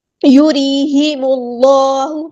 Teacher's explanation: میم کو ہم لام کے ساتھ ملا دینا، حمزۃ الوصل ہمارا ڈراپ ہو جائے گا. اللہ کا جو نام ہے وہ موٹا پڑیں گے یہاں پہ، کیونکہ اس سے پیچھے پیش یعنی ضمہ آئی ہے.